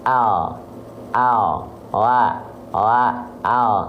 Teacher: kalau kita lafalkan huruf L ya kalau huruf l itu biasanya yang kita sentuhkan hanya ujung lidah kita saja